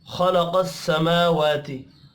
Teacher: मीम और वाव खड़ी ज़बर की वजह से एक एक अलिफ के बराबर खींच कर पढ़े जाएंगे।